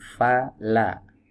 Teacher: Nah sekarang kita masuk ke huruf lam tadi udah kita sebutkan makhrajnya ada di sisi lidah bagian depan ya dibaca tipis